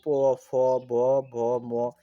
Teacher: ঠোটের এগুলো উচ্চারণ করার ক্ষেত্রে তোমার উচ্চারণ স্থান হলো কি? উষঠ অর্থাৎ ঠোট। এইজন্য এগুলোকে বলা হয় উষ্ঠ বর্ণ।